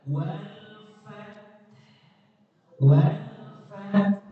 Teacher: Maka jangan sekali-kali menghilangkan bunyi ha. Bunyi ha tidak boleh dihilangkan, yang boleh disukunkan atau dimatikan. Bunyinya tetap ada.